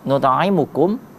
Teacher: huruf mim pada kata kum, nut'imukum, itu tidak boleh dibaca dengung.